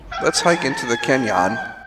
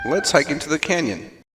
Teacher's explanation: In both the words echo and canyon, the first syllable is stressed.